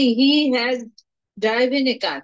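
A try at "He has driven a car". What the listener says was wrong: হি হ্যাজ ড্রাইভেন, এটাকে আমরা উচ্চারণ করব ড্রিভেন। ড্রিভেন, হি হ্যাজ ড্রিভেন এ কার, সে একটি গাড়ি চালিয়েছে, প্রেজেন্ট পারফেক্ট টেন্স।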